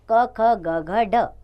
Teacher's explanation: कंठ का जीवा के मध्य भाग से स्पर्श होना है, यानी कंठ और जीवा के मध्य भाग में इसका स्पर्श होता है, तो ये कंठस्थ व्यंजन होते हैं।